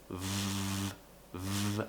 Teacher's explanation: The difficulty here for lots of non-natives is producing the V sound followed by an R, because the V sound, the teeth have to go down onto the bottom lip. V, V, and we create some friction.